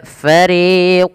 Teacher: kita namakan dengan izhar yang artinya jelas apa yang dijelaskan yaitu menjelaskan suara nunnya tanpa ada embel-embel ya menahan